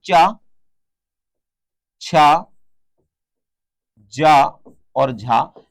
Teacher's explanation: चार वर्णों को हिंदी व्याकरण में स्पर्श संघर्ष की श्रेणी में रखा गया है